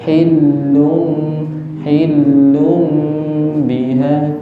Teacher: di kata hillu itu ada tasydid, maka ditahan